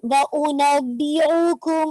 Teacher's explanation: व उनब्बिउकुम, अच्छा यहाँ पे आइन ना हो जाए, व उनब्बिउकुम, ओ नहीं, आ का साउंड नहीं आना चाहिए, हमजा है